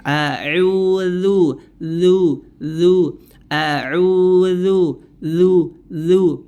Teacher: huruf dalzal itu keluar dengan menempelkan ujung lidah kita ke Ujung dua gigi seri atas ya tanpa menebalkan hurufnya jadi rileks Santai juga pengucapannya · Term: huruf dzal